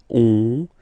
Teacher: you get this nasal on, really in your nose